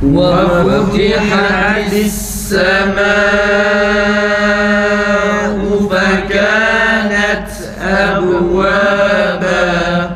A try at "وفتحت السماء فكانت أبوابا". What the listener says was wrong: Ta olmuyor arkadaşlar. فَكَانَتْ olmaz. Nefesi kesiyoruz, sonra ta harfini okuyoruz. فَكَانَتْ أَبْوَابًا. فَكَانَتْ أَبْوَابًا.